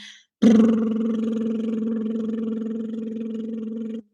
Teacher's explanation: you make a sound of br but you hold it so that your lips blow together a little bit like a horse